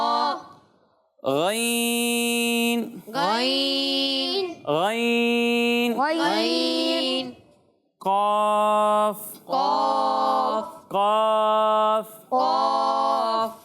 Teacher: तो ये 7 हरूफ मुस्तालियाँ हैं। ये वो हरूफ हैं जिन्हें हर हालत में हमेशा पुर यानी मोटा पढ़ना ज़रूरी है